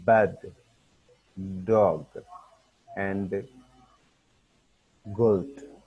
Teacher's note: हमने block air flow, बिल्कुल एयर जो है उसको ब्लॉक कर देना है और फिर अचानक से उसको छोड़ना है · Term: voiced sound